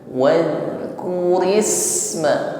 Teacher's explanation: sin sukun maka lebih tampak sifatnya yaitu hamz, jariyatun nafas, ada nafas yang mengalir tipis